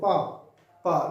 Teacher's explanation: दोनों होठ आपस में भिड़ रहे हैं। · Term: ओष्ठ्य